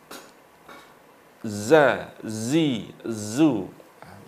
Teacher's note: ujung lidah menghadap dan mendekat gigi seri atas bawah. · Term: huruf zai